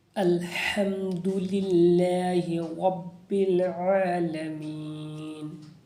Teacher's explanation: یہاں پر جلدی پڑھیں گے، ہا کو حرف ہلکی ہے، حلق سے ادا کریں گے